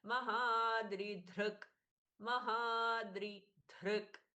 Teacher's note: द अल्पप्राण ध्रक ध महाप्राण ये दोनों में भेद करना है लास्ट का क हलंत है इसलिए आधा पढ़ेंगे